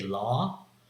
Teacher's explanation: in California accent, it is merged completely together with ah sound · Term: caught merger